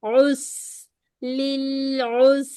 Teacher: ٹھیک ہے، عین کے اوپر ہے دوما، سین کے ساتھ ملائیں گے، سیٹی ہوگی پتلی